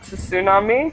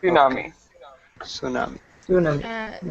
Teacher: in English we just don't pronounce the T